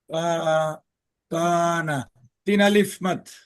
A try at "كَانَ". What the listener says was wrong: তিন আলিফ মদ? কোথায় তিন আলিফ টান চিহ্ন আছে? তিন আলিফ কোনো? এটা তো জবর। কয় আলিফ মদ হইব?